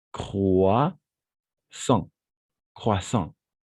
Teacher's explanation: Donc, croissant, et c'est un peu nasal, d'accord? Croissant, voilà. Avec la nasalisation.